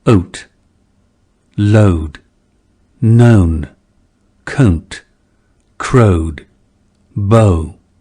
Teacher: The diphthong had a centered onset and started with the schwa or neutral vowel a, resulting in ow. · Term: mouth lexical set